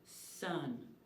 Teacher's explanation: a consonant that is unvoiced continuous the sound is made with the tongue behind the teeth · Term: fricative sound